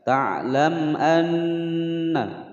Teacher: Di sini ada nun bertasydid. Cara membacanya yaitu ditekan dan ditahan selama 2 ketukan. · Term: gunnah musyaddadah